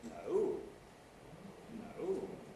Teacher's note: it starts around about mid pitch or sometimes quite a lot lower it can start quite low it then rises quite high and falls again